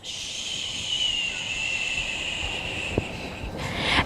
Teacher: when you're making the SH sound, the sh, your lips pucker like a kiss